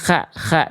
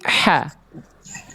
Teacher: H pedas itu karakternya lembut berbisik ya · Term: H kecil